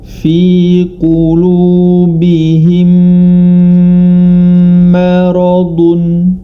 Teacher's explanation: Maka cara membacanya adalah dengan dimasukkan ke dalam huruf berikutnya, yakni mim yang kedua, dan disertai dengan dengung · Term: idgham mislain